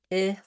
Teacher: If you do have it, it may be that you have more of a rounded and higher E kind of vowel, and that's not the same. So this I vowel has no lip rounding, and it's not tense like the E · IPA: ɪ